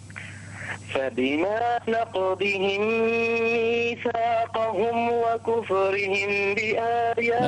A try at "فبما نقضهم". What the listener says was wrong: انتبه إلى الضاد، انتبه إلى الضاد، فبما نقضهم. لا تنطق هدال.